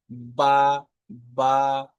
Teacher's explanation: 15 নম্বর মাখরাজ হলো বা, যার উচ্চারণ হয় দুই হোঁঠের ভিজ অংশ থেকে উপরের নিচে